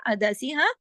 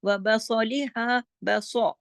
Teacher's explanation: سواد کو موٹا کر کے منہ بھر کے پڑھیں گے, زبان اوپر اٹھے گی